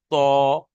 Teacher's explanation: মুখ গোল করে, অর্থাৎ অ পড়তে হবে, আ পড়া যাবে না। যেমন ত, এটা তা পড়া যাবে না।